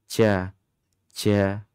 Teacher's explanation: Dia kuat, syiddah. Dia juga jahar. Tapi adik-adik semuanya, jangan nanti terpeleset dia masuk pada sifat hamas ya.